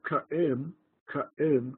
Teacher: two syllables cut em with a bit of silence between the two syllables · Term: glottal stop